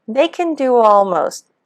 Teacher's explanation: almost as much alright so we've got the reduction with ken we have the linking and the w intrusion for do almost